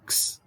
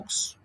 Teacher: Es decir, se transforman en la consonante X. La consonante X es una consonante doble, porque tiene el sonido K, digamos así, y el sonido S